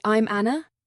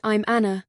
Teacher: a rising intonation at the end, I'm Anna, can sound uncertain, while a steady tone, I'm Anna, shows confidence